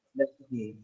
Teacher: the A should be, Schwa sound. That means we don't have to pronounce it.